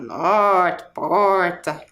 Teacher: a fala da região do Mato Grosso caracteriza pela pronúncia do R mais caipira, que é aquele R puxado, norte, porta, tá?